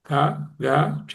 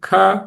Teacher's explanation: అదే ఖ అంటే ఎక్కువ గాలి కావాలి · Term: మహా ప్రాణములు